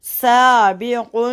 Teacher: سین کو باریکی سے ادا کرتے ہیں. سیٹی کی آواز ہے صاد نہ نکلے